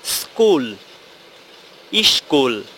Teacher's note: শব্দের প্রথমে বা ধ্বনির প্রথমে একটা ই ধ্বনি নতুন করে আবির্ভাব হলো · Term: আদি স্বরাগম